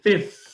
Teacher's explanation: the f is what we call labial dental lips and teeth